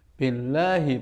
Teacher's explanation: Billahi panjangnya lahi itu hanya satu ayunan saja.